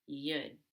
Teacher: it can become you'd with a short back U as in book.